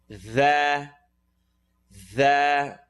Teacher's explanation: Dhal is the tip of the tongue at the edge of the top teeth.